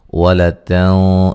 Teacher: ولتن نون ساکن کا موٹا اخفا ہے